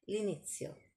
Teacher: So l'inizio is two words put together and you sound it like it's one word.